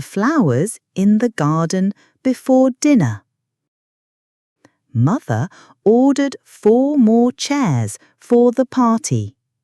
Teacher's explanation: all have that soft ending without a hard R sound